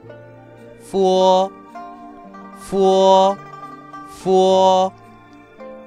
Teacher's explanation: La F se pronuncia igual que en español, haciendo un sonido de vibración leve entre los labios inferiores y los dientes superiores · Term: efe